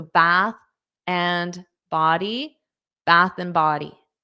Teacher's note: So it has to sound like one one word. You're taking three words and you're making it sound like one. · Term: glue the sounds together